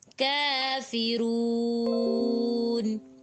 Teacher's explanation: رون کہتے ہوئے ناک میں آواز نہیں جانی چاہیے۔